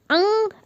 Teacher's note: अंग में नाक की सहायता लग रही है